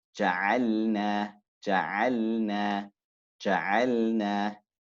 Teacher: The lam leans to the tip of the tongue as opposed to the sides towards the makhraj of noon. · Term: al-inhiraf